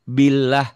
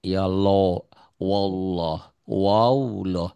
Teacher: Kalau sebelum lafaz Allah barisnya di bawah berarti bunyi A tipis. Billah. Tapi kalau sebelumnya baris di atas bisa patah, bisa domah itu bunyinya O.